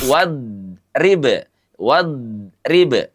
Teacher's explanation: huruf dhad itu sifatnya istitalah, memanjang. Jadi wadrib wadrib tidak wadrib.